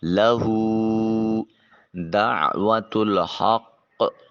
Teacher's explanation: عین کو وسط حلق سے نکالیے اور ہا کو حلق سے نکالتے ہوئے قاف کو موٹا اور پر کر کے ادا کریں گے، اور ہا کو قاف سے ملاتے ہوئے سختی کے ساتھ آواز آئے، مگر وقف کی صورت میں ہا کو قاف کے ساتھ ملا کر سختی کے ساتھ ملاتے ہوئے اس کی آواز کو چھوڑ دیں گے۔